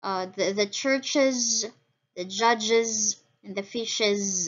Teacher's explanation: for the schwa and then z sound, we have the churches, the judges, and the fishes